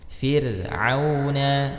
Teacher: Fir'auna fir ra, di sini ra sukun dibaca tarqiq ya, karena ra sukun sebelumnya kasrah ya